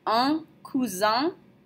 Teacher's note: un cousin, with a nasal sound at the end